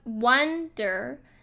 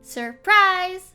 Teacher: wonder is stressed on the first syllable, and surprise is stressed on the second syllable